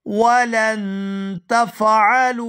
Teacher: यहाँ लाम को नून साकिन के साथ मिलाएंगे तो इख्फा करेंगे